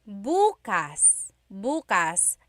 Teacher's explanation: emphasis is on the first syllable, that means tomorrow.